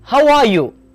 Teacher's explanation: Here the word you is stressed and the pitch rises at the end.